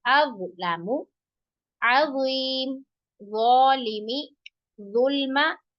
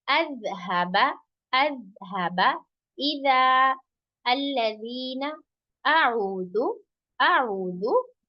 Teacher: सिर्फ इसके अंदर क्या फर्क है कि जौ जो है वो मोटा पढ़ा जाएगा, जाल जो है वो बारीक पढ़ा जाएगा।